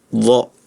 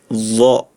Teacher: makhrajnya ujung lidah ada di ujung gigi seri atas. Jadi dha, jangan zo ya rekannya. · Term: huruf dha